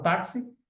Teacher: já na palavra taxi eu tenho x com som de KS